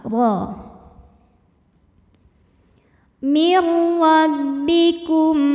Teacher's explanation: Huruf ra dibunyikan secara tafkhim karena ra-nya ini berbaris fathah. Maka dibacanya tebal